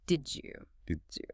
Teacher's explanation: When a word ending in a hard D sound smashes into a word starting with a Y sound, the pressure creates a soft J sound, like the J in jump. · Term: assimilation